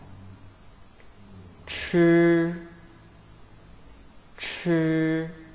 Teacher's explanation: It is similar to 知 except it is an aspirated sound.